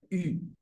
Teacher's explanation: como una I con la boca de u no I entonces esa sería esa se llamaría vocal cerrada frontal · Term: vocal cerrada frontal redondeada